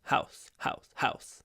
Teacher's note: you can use breath house or you can croak house house house but you mustn't use your full voice · So when you say house house house can you hear I don't use my full voice house you can use breath house or you can croak house